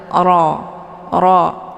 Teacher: sekedar saja Kemudian ro ini hukum bacaannya adalah tafimun mufakamun yaitu ro yang mesti dibaca tebal karena rnya berharakat fathah cara bacanya posisi pangkal lidah ikut rangkat ke langit Ro Ro · posisi pangkal lidah ikut terangkat ke langit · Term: tafkhimun mufakkamun